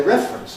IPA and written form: ˈrefrəns (reference)